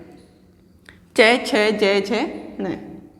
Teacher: ये जब वर्ण हम बोलते हैं तब तालव्य वर्ण है ये। जब हम बोलते हैं तो जिह्वा जो होती है, जीभ जो होती है, वो हमारे तलवे पे जो तालवा होता है उस पर स्पर्श करती है।